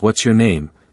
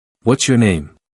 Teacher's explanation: My intonation doesn't rise at the end the way it did with the earlier examples. In fact, you might even hear a slight downward drop.